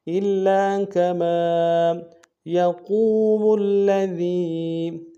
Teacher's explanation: قاف کو موٹا ادا کرتے واو کے ساتھ ملانا ہے، واو مدہ ایک انداز میں کھینچیں گے، میم کو آگے لام کے ساتھ ملانا ہے، لام کے اوپر تشدید زور دیں گے، ذال کو یا کے ساتھ ملانا ہے، یا مدہ ایک انداز میں کھینچیں گے، ذال کو باریک ادا کریں گے۔